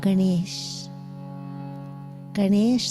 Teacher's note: the tongue is retroflex on the end is curled back like ganesha's trunk and this is a schloka